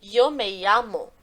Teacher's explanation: Eu vou pronunciar em espanhol os dois L's e o Y da mesma maneira. Então, por exemplo, se eu falo yo me llamo, esse Y do yo precisa ter o mesmo som dos dois L's do llamo, tá?